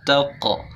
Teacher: Taqhar pas di taqhar itu qa-nya ada qalqalah taqa. Jadi qalqalahnya tebal, artinya memantulkan bacaan huruf qaf